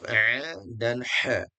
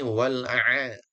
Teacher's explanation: A dan ha itu di wastal haqqi di tengah tenggorokan ya. Maka pastikan posisinya pas supaya keluarnya makhrajnya juga pas.